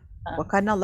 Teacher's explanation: Wa kana Allah, kalimah Allah, lam lafaz ajalah. Maknanya huruf lam pada kalimah Allah itu dibaca tebal